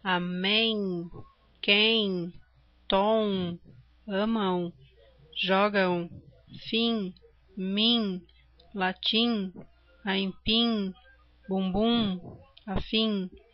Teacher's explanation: Vejam que o som do M, ele é completamente pelo nariz.